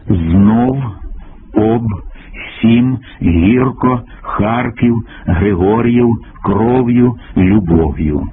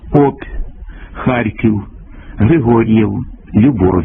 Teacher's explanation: губні б в п ф м та фонему р у кінці слова і складу слід вимовляти твердо